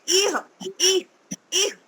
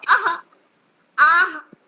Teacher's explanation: विसर्ग का उच्चारण हलंत वाला ह, हलंत वाले ह के समान होता है